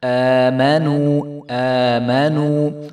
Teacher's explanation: حمزہ کے اوپر کھڑا زبر ہے تو الف کو حمزہ کو جو ہے ایک الف کے برابر ہم لمبا کریں گے، آمانو نہیں ہونے دیں گے۔